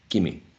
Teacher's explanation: We see a long E. A long E that is shortened. E becomes E. The same quality, the same height, the same position, right? E, but shorter. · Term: shortening of the long vowel